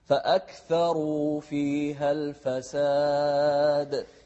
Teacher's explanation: الواو هني واو مادية. فأكثروا لازم تطلع الواو من الجوف، ما تقول فأكثروا، لا تطلعها من خشمك.